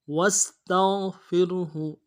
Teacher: غین کو واضح کرنا ہے اور فا کے ساتھ بعد جو را ہے اس کو باریک پڑھنا ہے اور ہو ہا کو نرمی سے ادا کرنا ہے.